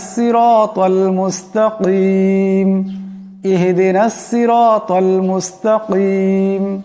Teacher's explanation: মুস্তাকিম এখানে বড় কাফ আছে আওয়াজটা গলা থেকে আনতে হবে